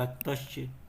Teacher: विसर्ग के आगे च है तो उसका तालव्य में परिवर्तन हो गया